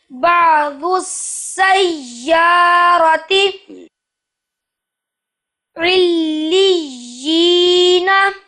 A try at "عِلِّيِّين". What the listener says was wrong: علیین. لام کے اوپر تشدید ہے، اس کی آواز جاری رہے گی. علیین.